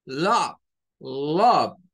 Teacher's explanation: esa O no suena a ningún tipo de O. De hecho, es un sonido que más parece una A con una U. Por eso se suele usar este símbolo, que es el circunflejo, para representarlo.